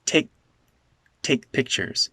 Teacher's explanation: This k is unreleased.